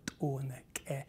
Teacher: Na'vi has, as I say, some exotic sounds, like the ejectives